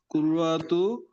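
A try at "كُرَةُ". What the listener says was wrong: কুররাতুন না, শব্দটা হলো কুরাতু, কুরাতুন মানে হলো বল, কুরাতুন। হ্যাঁ, কুররাতু না, কুরাতু।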